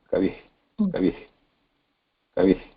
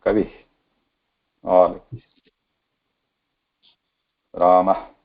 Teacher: Visarga, Visarjaniya, there is no vibration. It's a light breath